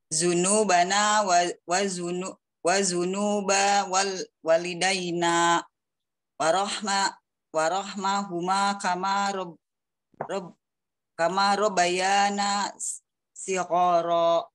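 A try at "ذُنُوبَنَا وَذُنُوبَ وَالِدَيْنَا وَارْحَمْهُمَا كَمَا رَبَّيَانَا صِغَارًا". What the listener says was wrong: Ya, itu tasdidnya tetap harus dijaga. Ya, tetap harus dijaga. Yang penting panjang pendek, tasdidnya dijaga.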